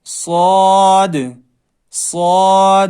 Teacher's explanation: اس کو ساد نہیں پڑھنا ہے، ساد نہیں، صاد، صاد، تھوڑا موٹی آواز میں